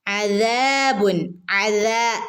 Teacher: ദാലിന്റെ കൂടെ അലിഫ് മദ് വന്നിട്ടുണ്ട് രണ്ടനക്കം നീട്ടി കൊടുക്കുക